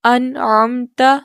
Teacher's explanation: نون زبان کا کنارہ ثنایا سے انیاب تک یعنی سامنے کے 6 مسوڑوں سے نون کا مخرج ادا ہوتا ہے